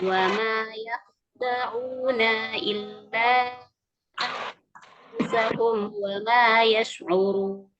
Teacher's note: kho di situ dia harus tebal ya ya. Wama bukan yah, kalau yah jadi tipis ya.